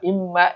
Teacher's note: Imma, mad wajib ya. Imma, imnya, mim bertasdid, maka dibaca guna. Imma, dibaca 2 harakat. Ma, mad tobi'i.